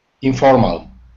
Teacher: the stress is on the second syllable and there's only three syllables